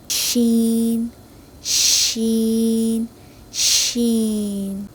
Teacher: پچھلے حروفوں میں آپ نے دیکھا ہوگا کہ اس میں دانتوں کا عمل دخل تھا زبان کے ساتھ لیکن اس حروف میں نہیں ہے. زبان کے درمیانی حصے اور اوپر والے تالو کے درمیان جو فرق ہوتا ہے اسی سے شین ادا ہوتا ہے اور یہ خلا بہت کم ہوتا ہے اور یہی خلا شین کی آواز کو منہ میں پھیلاتا ہے اور پھر ادا ہوتا ہے.